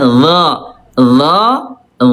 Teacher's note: zo Ayah Bunda dia tebal, diangkat pangkal lidahnya